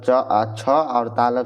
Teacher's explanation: च छ और तालव स ये दोनों जो है तालु से बोले जाते हैं